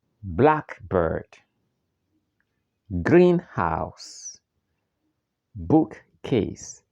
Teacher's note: the main stress is on the first part of a compound word